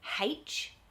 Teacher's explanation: the habit in australia is to put a ha at the beginning of it so a lot of people in australia might say h it's